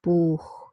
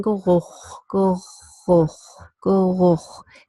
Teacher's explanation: It's in between the velum and the uvula